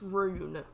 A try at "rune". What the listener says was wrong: Ruin. Ruin. Ruin. R-U-N-E. Like run with an E on the end. Making the U sound like you rather than Rune.